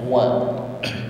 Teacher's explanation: mengucapkan huruf wau sesuai dengan makhrajnya syafatain ya bibir dihimpun ke depan